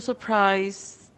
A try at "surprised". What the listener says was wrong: Okay, remember if there is D, letter D, you have to pronounce the D clearly. Sometimes D sounds like T, like in this word, surprised.